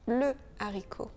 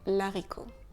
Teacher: Et la raison pour ceci, c'est que le H est un H aspiré. Donc, on ne fait pas d'élision, on dit le haricot, on ne dit pas l'haricot.